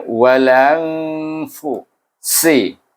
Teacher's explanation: Si baca dengan hamas dan safir.